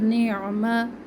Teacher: عین وسط حلق سے ادا ہوگا، آواز کو رگڑ کاتی آواز آئے گی باہر کی طرف